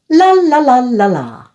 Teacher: it's voiced and the tip of the tongue touches the alveolar ridge, that little bumpy area just behind the upper front teeth. The sides of the tongue are lowered, allowing air to flow around the sides of the tongue. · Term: light L